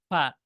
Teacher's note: তাইলে আমাদের দুই ঠোঁটের মাঝখান থেকে ফা